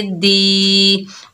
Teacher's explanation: दाल के नीचे जेर, आगे या साकिन है, ये या मद्दा है, एक अलिफ की मिकदार खींच कर पढ़ेंगे